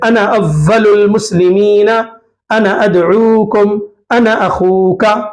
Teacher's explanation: انا کے بعد سبب حمزہ ہو تو مد بھی نہیں کریں گے، یعنی ہر دو صورتوں میں جلدی پڑھیں گے